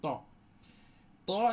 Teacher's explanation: ত এর সিফাত হচ্ছে তাফকিম অর্থাৎ ভারী করে পড়তে হয় জিহোবার গুঁড়াটা উঁচু করে দিয়ে